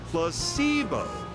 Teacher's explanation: The stress is on the middle syllable.